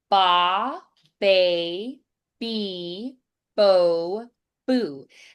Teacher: you'll feel this pop of air through that consonant